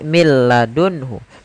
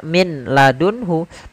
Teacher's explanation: Contoh di sini millun hu tidak dibaca min ladunhu tapi langsung ke huruf lam karena nunnya dianggap tidak ada dan diidgomkan ke huruf lam